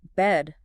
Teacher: And for bed, keep it higher and shorter.